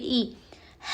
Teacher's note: حمزہ حلق کے نیچے والے حصے سے ادا ہوتا ہے